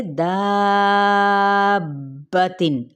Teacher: اب آپ نے یہاں پر 6 حرکات لازمی کھینچنا ہے کیونکہ آگے سبب مد کیا ہے تشدید موجود ہے